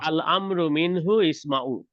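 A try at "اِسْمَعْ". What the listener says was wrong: ইসমা, ইসমা। না ভাই, না, লাস্ট ইসমা, লাস্টে যজম বা সাকিন, ইসমা।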